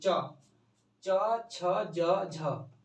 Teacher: च बोलिए तो ये हम लोग का ऊपर तालु वाला, तालु को टच करता है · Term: स्पर्श संघर्षी व्यंजन